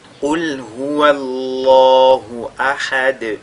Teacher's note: Il faudra juste faire at-tafkhim lorsque vous lisez la lettre lam. Qul huwallahu ahad, de cette façon-là.